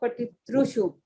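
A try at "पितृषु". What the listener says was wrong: So here, the R should not sound like E or it should not sound like U. Patitra. It is neither Patitri nor Patitru. It is in between. Patitra.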